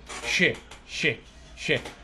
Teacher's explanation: هسه انت من تقول ش ش ش نهايه اللسان تلامس نهايه سقف الفم soft palate